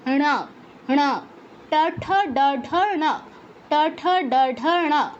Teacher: ট বলার সময় কি বলেছি, জিহ্বাটা ফোল্ড হয়ে পেছনে মূর্ধায় গিয়ে স্পর্শ করে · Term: মূর্ধন্য